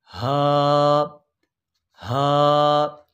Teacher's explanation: हा हलक के निचले हिस्से से, जिसे इंतहाई हलक कहते हैं, अदा होगी